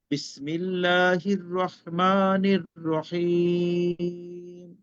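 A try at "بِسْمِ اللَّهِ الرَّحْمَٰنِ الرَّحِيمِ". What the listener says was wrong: লাস্টের টান গুণ আরেকটু স্লো পড়তে হবে, বুঝছেন? একটু বেশি তাড়াতাড়ি পড়ে ফেলছেন আর কি।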